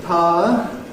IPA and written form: ˈpaə (Power)